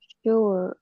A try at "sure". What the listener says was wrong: Con chưa rút lại. Con chưa đẩy hơi ra.